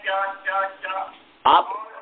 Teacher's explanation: चौ का उच्चारण तो होता है दांत के ऊपर जो ऊंचा वाला भाग है उसमें लगता है